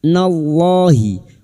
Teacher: lam jalalah yang didahului fathah kita baca tafkim